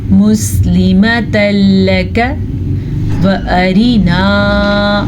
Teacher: کاف کو لمبا نہیں کرنا کیونکہ کاف کے اوپر بھی زبر ہے اور لام کے اوپر بھی زبر ہے